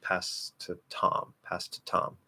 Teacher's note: it's going to be a weak T in two and then a strong T in Tom